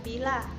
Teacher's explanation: ciri-ciri tinggi depan tak bulat, contoh kata bila